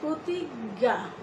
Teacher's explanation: তারপরে এই যে তোমরা স্ক্রিনে দুটো বর্ণ দেখতে পাচ্ছ, যে যদি আদ্য অয়ের পরে এই দুটো বর্ণ থাকে, অর্থাৎ যেটাকে আমরা এটাকে বলি যে বর্গীয় জ যুগ ইয়র যে যুক্ত রূপটা, এটা কিন্তু আমরা উচ্চারণে কিন্তু বর্গীয় জ ইয় কোনোটাই করছি না, আমরা উচ্চারণ করছি গ। যেমন প্রতিজ্ঞা লিখতে গেলে এখানে বর্গীয় জ যুগ ইয় সংযুক্ত বর্ণটা রয়েছে, কিন্তু আমরা উচ্চারণ করছি প্রতিজ্ঞা, দুটো গ।